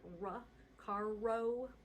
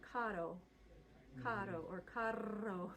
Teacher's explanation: So like A instead of A-ya, O instead of O-wa. And the R's all should be flipped or rolled